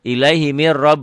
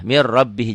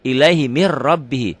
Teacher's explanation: Ini nun ketemu ro, tidak pakai dengung, nun ketemu ro. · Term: idgham bila gunnah